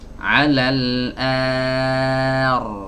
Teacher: Ro-nya dibaca tebal. A-nya tipis, ro-nya tebal.